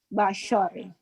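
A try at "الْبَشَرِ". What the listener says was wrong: Bashar, shin, bukan basor, bashar.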